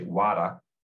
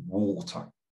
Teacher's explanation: The vowel sound is different to my vowel sound. Also, the consonant is not t, but d